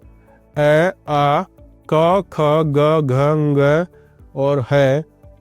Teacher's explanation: इनका उच्चारण कंठ से किया जाता है।